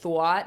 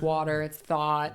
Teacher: If I'm from New York, right, well maybe I'm like rounding my vowels more, like thwat and that sort of thing.